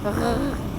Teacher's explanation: R, it's not really a tongue noise. With the German R, you put the back of your tongue up and you use more air.